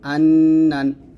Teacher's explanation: এখানে নুনের উপরে তাসদিদ থাকার কারণে গুণনা আদায় করতে হবে।